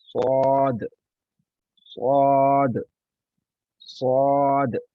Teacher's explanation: इसकी अदायगी करते हुए हमारा जो मुँह है, जो हमारे होंठ हैं, वो भी गोल होते हैं और मुँह भारी होता है। हमने इसकी आवाज़ भर के निकालनी होती है, मुँह भर के निकल दिया। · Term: मोटा हरूफ